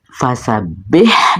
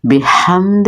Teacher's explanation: یہاں پہ ہا کو وسط حلق سے ادا کریں، دال کے نیچے زیر ہے، اس کو لمبا نہیں کریں گے اور چٹکا بھی نہیں لگائیں گے.